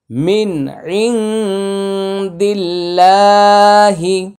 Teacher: মিন ইং দিল্লা, এটা দাল লামজের দিল, লাম খারাজ লা, দিল্লা। এটা আল্লাহ শব্দের পূর্বে জের আসছে, পাতলা হবে উচ্চারণটা,